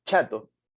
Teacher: primero hago que el aire no salga para que luego que el aire termine saliendo